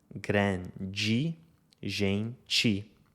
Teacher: aquele E final é pronunciado I no Brasil.